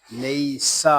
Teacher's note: سین زبر سا، لیسا، سین جو ہے یہ حروف سویریہ میں سے ہے، اس میں سی ٹی کی آواز آئے گی۔ لیسا، اس کو ہا نہیں پڑھیں گے، لیسا۔